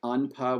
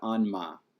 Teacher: So like anpa would go to anma. The place of articulation would remain, but the stop would turn into a nasal